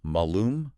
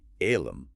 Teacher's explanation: The Latin word for apple, malum, with a long A, sounds almost identical to the Latin word for evil, alum, with a short A.